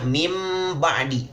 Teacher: mulut kita tertutup karena memang mim itu keluarnya dari bibir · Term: iqlab